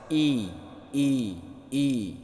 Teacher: menurunkan bibir bawah ketika membaca ee berharakat kasrah i i i kita pecahkan bibir ya ke samping